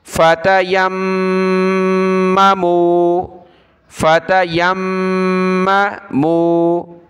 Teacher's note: یا کو میم کے ساتھ ملائیں گے اور غنہ ہوگا